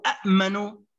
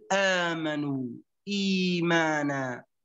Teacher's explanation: نقلب أو نحول الهمزة الثانية إلى حرف مد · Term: مد بدل